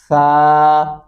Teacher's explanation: इसको नरमी से अदा करेंगे, सा, दोनों दांतों के नीचे जबान आएगी